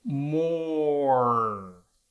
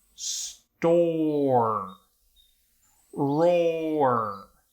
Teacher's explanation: if you slow down more it's like they're two separate sounds the o and the er more it's almost like it's got that same er that we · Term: diphthongs